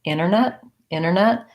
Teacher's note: in this word internet with a pronounced realty released air but a lot of americans are going to say that with basically leaving that tea out internet internet what you want to avoid is you don't want